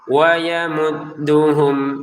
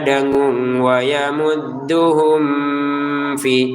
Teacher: hum di sini bertemu dengan f jelas sebagaimana jelasnya mim sukun bertemu wau